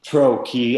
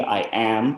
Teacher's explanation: So tro-key, stress comes first. I am, stress comes second.